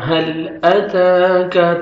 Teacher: 1 second تا کو کھینچنا ہے، ایک الف کے برابر ہے کھڑا زبر